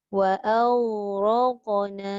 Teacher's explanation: Ghain tak ada qalqalah. Qaf ada qalqalah. Jadi bila kita bunyi wa aghraq, ada dua kali lantun kan?